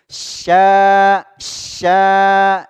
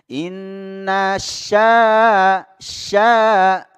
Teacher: di tengah lidah makhrajnya huruf syin di tengah lidah yang digesekkan dengan langit-langit ya angin keluar kencang Ya seperti berputar gitu di dalam kemudian keluar sya sya huruf